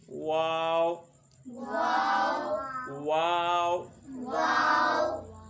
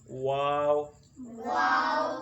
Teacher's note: تھوڑا سا ادائیگی کے لیے یا ادائیگی کے وقت اس کو موٹا محسوس ہونے دینا ہے، یعنی تھوڑا سا یہ موٹا ہوگا. ہونٹوں کو گول کرنے کی وجہ سے اس کی آواز تھوڑی بھاری نکلے گی